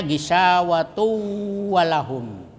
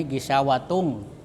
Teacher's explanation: Jadi dimasukkan itu ee tanwin kepada wau. Jadi tidak terdengar itu tanwinnya, tetapi dia kedengarannya wau bertasdid karena dimasukkan ya tanwinnya dimasukkan ke wau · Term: idgam bigunnah